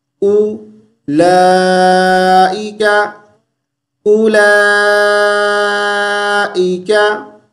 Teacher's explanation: اولئک کا واو کو نہیں پڑھیں گے